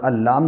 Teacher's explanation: لام کے اوپر تشدید ہے، تشدید والے حرف کو پیچھے سے ملا کے پڑھتے ہیں، جیسے حمزہ لام زبر اللام زبر لام کے اوپر زبر کو جلدی ادا کریں، تھوڑا بھی نہ کھینچیں.